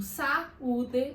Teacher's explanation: tenho simplesmente duas vogais querendo disputar um espaço de uma sílaba, mas elas acabam se separando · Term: hiato